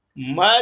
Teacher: म जो है वो नासिका से भी बोला जाता है क्योंकि पंचम वर्ण है, और ओष्ठ से भी बोला जाता है।